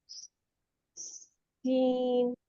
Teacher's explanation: पहले इसमें विसल लाए सीटी की आवाज लाए फिर इसको सीन कहे